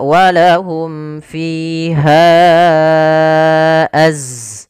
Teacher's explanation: Pada dasarnya ha itu dua harakat. Karena datang setelahnya huruf hamzah maka menjadi panjangnya empat harakat atau lima harakat. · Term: mad jaiz munfasil